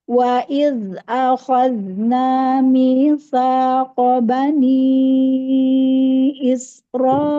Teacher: Waid langsung ditekan di hamzah biar memanjang